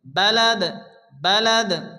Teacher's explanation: বিহাযাল বালাদি, আয়াতের শেষে জবরজের পেজ আসলে সে অক্ষরটিকে সাকিন করে পড়তে হয়। দাল সাকিন, দাল যেহেতু কলকলার অক্ষর হালকা ধাক্কা দিয়ে পড়তে হবে